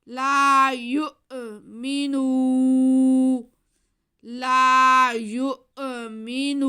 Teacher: لا آگے میم کے نیچے زیر ہے اور نون پہ پیش ہے اور واو ساکن ہے. واو ساکن سے پہلے پیش ہو تو واو مدہ ہوتا ہے، تو یہ بھی واو مدہ ہے. نون کے بعد کو ہم کھینچیں گے